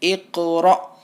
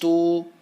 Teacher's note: حمزہ ساکنہ کے پڑھنے میں جھٹکا ہوتا ہے، تو ہمیں یہاں جھٹکے کے ساتھ را کو پڑھنا ہے.